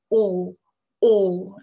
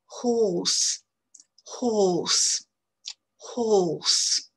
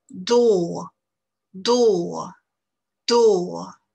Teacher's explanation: Donc, c'est toujours pareil, c'est une voyelle longue, on va bien ouvrir la bouche en faisant un rond. Et la voyelle, elle est très, très à l'arrière de la bouche. O, O, la langue est vraiment massée à l'arrière de la bouche. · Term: la voyelle O